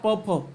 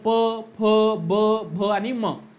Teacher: प फ चा उच्चार बघा प फ आहे का नाही? म्हणजे प चा उच्चार करत असताना ओठाले ओठ लागलंच पाहिजे. विदाऊट ओठाला ओठ लावता प या वर्णाचा उच्चार केला जाऊ शकत नाही. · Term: ओष्ठ्य